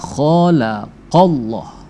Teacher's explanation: Jadi lam jalalah itu dia dibaca tebal ya. Jadi ketika ada huruf Allah lalu sebelumnya berharakat fathah atau dhammah maka dia dibaca tebal.